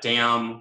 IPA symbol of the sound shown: m